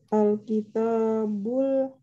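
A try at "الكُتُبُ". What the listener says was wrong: Alkitab, taknya panjang. Tapi kalau taknya tidak panjang berarti ini bukan Alkitab, tetapi Al-Kutub. Ya, Al-Kutub. Ya, Al-Kutubu. Ya, Al-Kutubu itu bentuk jamak. Jamak dari kata Al-Kitabu.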